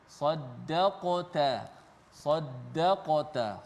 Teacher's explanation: Saddaqata, saddaqata, sa tebal, dal nipis, qaf tebal, ta nipis.